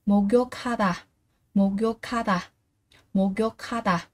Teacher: cờ gặp hờ thì cờ sẽ được đọc là khờ